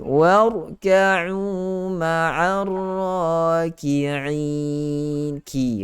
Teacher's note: Kaf depan sedikit daripada huruf qaf itu. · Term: huruf kaf